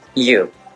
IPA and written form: juː (you)